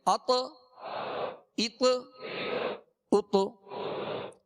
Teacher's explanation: مخرج میں لگ کر آواز میں جنبش ہوگی، آواز لوٹتی ہوئی آئے گی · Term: قلقلہ